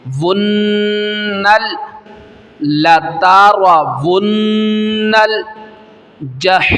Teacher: واو کو نون اور نون کو لام کے ساتھ ملانا ہے